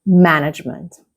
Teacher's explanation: In this case, the stress is on the first syllable. It's right at the beginning.